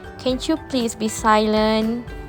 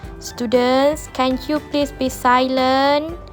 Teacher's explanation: you can hear the rising intonation at the end of the sentence